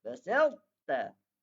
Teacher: sifat itbaq pada ta tu tetap kekal, iaitu dia tebal pada kalimah ahadtu dan basalta